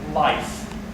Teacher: Beware of the diphthong between ah and e in words like life.